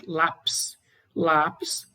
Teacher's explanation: palavra paroxítona, a penúltima sílaba é a mais forte e a terminação é IS.